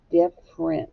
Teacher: we don't really hear the e do we that's not the way we say it different the e is silent so i'm going to cross out · We just hear one F, different. Okay, we don't really hear the E, do we? That's not the way we say it.